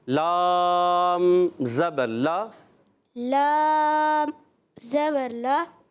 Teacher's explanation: اچھا, لام ناک میں پہلے نہیں جائے, لام آخر میں جائے گی. لا, جب آپ لا پڑھ رہے ہیں تو ناک میں آواز نہیں جانی چاہیے